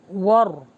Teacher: واو پر ہوٹوں کو گول کیجیے، را کو ہیوی کیجیے